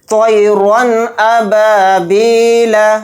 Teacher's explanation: را 2 زبر رن کو جلدی پڑھیں گے، غنہ نہیں کریں گے یہاں پر، یعنی را 2 زبر رن کو ظاہر کر کے پڑھنا ہے۔ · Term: اظہار حلقی